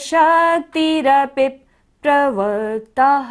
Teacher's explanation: तह पर क्या है विसर्ग है। जितनी भी सांस है हमारी सारी हमें बाहर छोड़नी है।